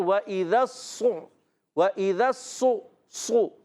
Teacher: اور ذال کو صاد سے ملانا ہے، صاد کو کلیئر کرنا ہے۔ اچھا ذال دیکھیں بغیر سیٹی والا ہے، اور صاد سیٹی کے ساتھ، یہ یاد رکھیں جب ہم پڑھتے ہیں وَإِذَا الصُّ، وَإِذَا الصُّ، صُ، صاد کو موٹا بھی رکھنا ہے۔ · صاد کو موٹا بھی رکھنا ہے۔ اچھا سیٹی بھی ادا ہوگی۔